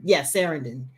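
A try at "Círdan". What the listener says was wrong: They pronounce it with the K. It's Karen. It's Karen. because all the C's they pronounce as K's.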